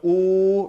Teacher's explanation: rounding of the lips and this clear ooh sound · When it comes to dhamma, the sound there should be like a long O sound, like you, blue, like food. So oo, rounding of the lips, and this clear oo sound